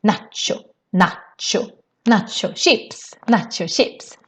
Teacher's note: we pronounce it, of course, the Swedish way, which is quite long vowels